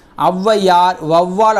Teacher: சொற்களின் முதலில் வரும்போது தனக்குரிய இரண்டு மாத்திரை அளவுல இருந்து குறைந்து ஒன்றரை மாத்திரை அளவுல ஒலிக்குது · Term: அவகாரக் குறுக்கம், அவுகார குறுக்கம்